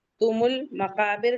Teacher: तुमुल मकाबिर लाम पढ़ रहे हैं क्योंकि मीम कमरी से है। काफ के बाद का अलिफ मद्दा है, 2 काउंट।